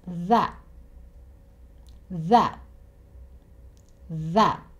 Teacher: he stops himself just before he makes the t sound. When you make the t sound, air comes out of your mouth.